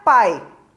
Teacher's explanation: o som da letra A sai com muito mais intensidade do que o som da letra I. É como se o som da letra I já fosse se apagando em relação ao som da letra A. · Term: semivogal